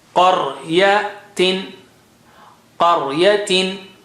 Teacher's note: قا is high sounding, ra is thick.